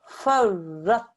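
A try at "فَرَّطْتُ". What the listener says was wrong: the ta is there, darling, so we have to make sure that the sound comes into this word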